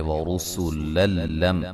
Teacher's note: یہاں نون تنوین کا ادغام ہوگا لیکن بلا غنہ ہوگا، غنہ نہیں کریں گے